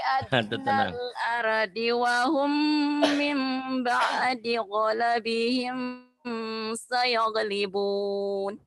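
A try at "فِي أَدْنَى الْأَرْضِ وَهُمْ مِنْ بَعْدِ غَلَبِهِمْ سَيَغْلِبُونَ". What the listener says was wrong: Tuh ada suara kakeknya tapi nggak kebangetan ya. Kalau yang bahaya itu terlalu banyak ngegeternya. Nah itu kebanyakan, jangan kebanyakan vibranya ya. Kalau belum bisa bermain vibra, jangan bermain dulu ya. Jadi kebanyakan jadi suara kakek neneknya keluar gitu, jangan.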